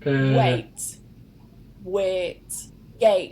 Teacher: the diphthong A changes to the monophthong A